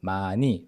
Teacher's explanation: 마 plus ㄴ carrying over to the next syllable